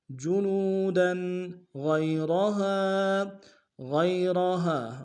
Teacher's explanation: بدلناہم جلودا، واو مدہ ہے، لوم ہے، ایک مقدار میں کھینچیں گے، دال کے اوپر تنوین غنہ کریں گے